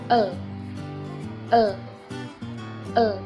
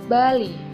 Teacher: Konsonan apico-alveolar sampingan el. Ujung lidah menempel pada gusi sehingga dapat keluar dari mulut melalui kedua belah sisi lidah.